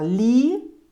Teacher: Por exemplo, quando você separa a palavra lixeira, você fala li-chei-ra. Você nota que a sílaba do meio, chei, tem a vogal E e a semivogal I.